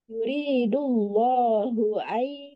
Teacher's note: dunia nah, tadi di yuridullahu hu-nya tidak boleh panjang ya. Tidak ada tanda panjang.